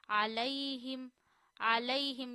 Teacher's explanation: अलैहिम, अलैहिम, यहाँ या साकिन से पहले जबर है, इसे नहीं खींचना। या साकिन से पहले जबर आए तो नरमी से पढ़ते हैं बगैर खींचे